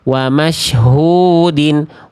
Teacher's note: Kalau kita bahas dasar hun-nya dua harakat karena ada mad thobi'i. Huyu-nya dibaca dua harakat doma ketemu wau sukun ya. · Hu-nya dua harokat ya karena mad tabi'i, lalu di sini dibaca din karena kasrotain.